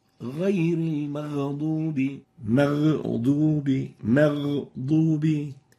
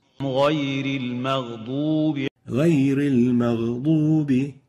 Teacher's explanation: take in consideration the softness characteristic of the ghain, which doesn't allow it to be having qalqala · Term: no qalqala